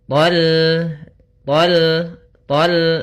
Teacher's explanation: Kemudian hati-hati, meskipun tha-nya termasuk huruf istila dan huruf itbaq, sehingga dia menebalkan suara tha-nya. Akan tetapi karena kita bertemu dengan huruf lam, maka dia lam-nya tipis, jangan ikut tebal, jangan thal, itu tebal.